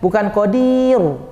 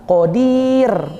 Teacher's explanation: Ro-nya ditipiskan saja, senyum saja sampai ujung ro suaranya habis. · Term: tarkik